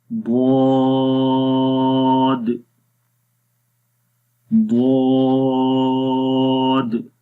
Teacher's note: جیسے ہی یہ زبان کی سائڈز لگتی ہے تو زبان تھوڑی سی آگے موو ہوتی ہے، اس کے اندر درازی آتی ہے اور یہ آہستہ سے آتی ہے۔